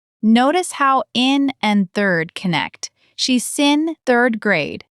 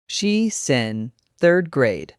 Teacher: Native speakers blend she's and in together. So she's in sounds like she sin.